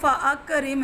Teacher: فا بھی پڑھا جا رہا ہے اور آگے حمزہ قطعی جو کہ متحرک ہے وہ بھی پڑھا جا رہا ہے